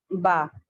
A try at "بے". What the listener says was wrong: ٹھیک ہے۔ اچھا، عربی میں ہم با کہیں گے، اردو میں ہم بے